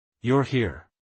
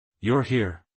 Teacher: different meanings depending on your intonation statement versus question you're here statement with falling intonation you're here question with Rising intonation